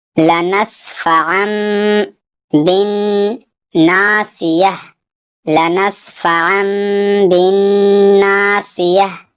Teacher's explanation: ناصیتی سے ناصیہ یعنی گولتا ہا بن جاتا ہے وقف کرنے کی صورت میں